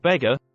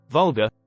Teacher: see how the stress is on the syllable where the weak sound of a is not